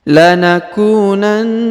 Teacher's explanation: huruf na ditahan dan ditekan dua harakat karena di atasnya terdapat tanda tasdid